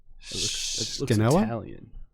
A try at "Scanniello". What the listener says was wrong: Chinello. The S is silent. Chinello.